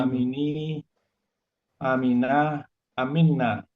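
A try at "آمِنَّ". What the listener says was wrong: A-nya panjang. Kan pendek.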